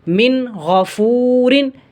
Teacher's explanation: را کے نیچے دو زیر ہیں تو را کو ہم باریک پڑھیں گے، کیونکہ را کے نیچے جب دو زیر کی تنوین آ جائے یا کھڑی زیر آ جائے یا ایک زیر آ جائے تو وہاں ہم را کو باریک پڑھتے ہیں.